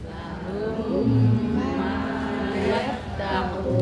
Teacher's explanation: bunyinya dua tiga ketuk jadi tidak boleh dijeda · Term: idgham mimi